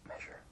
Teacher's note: when I'm whispering measure, I'm actually pronouncing sh and not the voiced one.